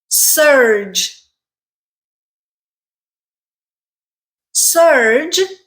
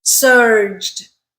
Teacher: surge ends with a J sound which is a voiced consonant sound therefore you add the D sound